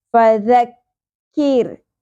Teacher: فذکر، ف زبر کو زیادہ نہیں کھینچنا، ذال نرمی سے ادا کرتے ہوئے ذال کی زبر کو کاف سے جوڑنا ہے اور کاف باریک پڑھا جائے گا، قوف کی طرح پر نہیں پڑھنا